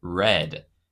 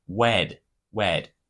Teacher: of the word car I would say the word car like my R would be like the W sound W instead of the word red I would say wed wed